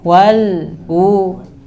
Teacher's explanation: Wal ditahan, jangan mantul.